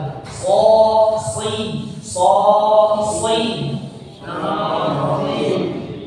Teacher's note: Pangkal lidahnya naik ke atas sehingga hurufnya menjadi lebih tebal.